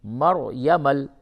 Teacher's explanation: اس را کو پر کر کے پڑھیں، را ساکن سے قبل زبر ہے، را کو پر کریں